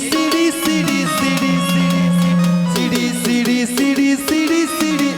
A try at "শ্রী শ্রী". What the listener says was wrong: আমি কি সিঁড়ি সিঁড়ি বললাম? আমি কি বলেছি? শ্রী শ্রী। বলো শ্রী শ্রী। শ্রী শ্রী।